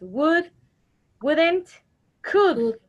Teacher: So in these words, you don't pronounce the L. The letter L is not pronounced.